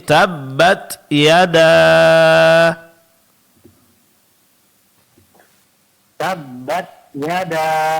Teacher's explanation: Suara tertahan itu sifat syiddah, keluar sedikit angin itu sifat hamas. Jadi tabbat yada.